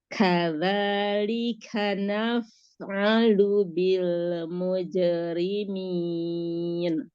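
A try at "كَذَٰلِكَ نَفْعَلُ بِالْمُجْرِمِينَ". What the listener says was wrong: Jangan dipanjangkan harokat pada na-nya, jangan naf, tapi langsung naf. Iya, jangan naf. Kalau tamtid itu namanya memanjangkan harokat. Jadi jangan dipanjangkan harokatnya, langsung masuk ke sukun. Naf.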